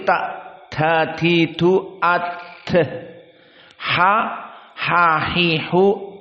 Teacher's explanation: tidak ditelan borot, tapi dikeluarkan ada borot, karena dia masuk kepada huruf al-hams, sifat al-hams.